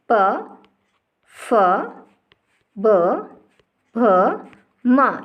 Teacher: और पै वर्ग देखिए आप पूरा प, फ, ब, भ, माँ, इन सभी वर्णों का उच्चारण करने पर होठ एक दूसरे को आपस में स्पर्श करते हैं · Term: ओष्ठीय वर्ण